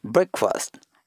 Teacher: instead of the long vowel we have to make it a very short